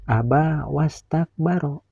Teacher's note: Huruf ro yang berbaris fathah ini harus dibaca tafhim, yaitu dibaca tebal · Pada bacaan ini ada huruf ba yang berbaris fathah berdiri. Ini dinamakan mad tabi'i. Harus dibaca panjang 2 harakat.